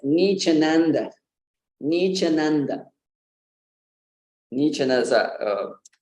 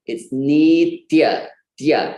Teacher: First of all, we need to pronounce that t. It's not ch.